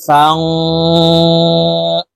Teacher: ফা নুন জবর ফাং, ইকফা গুন্না, নুন সাকিনের পরে ইকফার হরফ সদ আসছে, এই কারণে এই নুন সাকিনকে নাকের ভিতরে লুকাইয়া গুন্নার সহিত পড়তে হবে। ফাং, সদ বা জবর সবে, এই সদ বাকে ধাক্কা দিয়ে উচ্চারণ করব, কারণ বা কলকলার হরফ নিচের দিকে ধাবিত করে ধাক্কা দিয়ে উচ্চারণ করতে হবে।